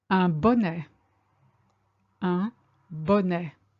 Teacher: Don't say the T on the end